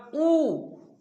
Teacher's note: उ उ बोलने पर उ आधा मतलब थोड़ा सा बंद होकर थोड़ा सा ही खुल रहा है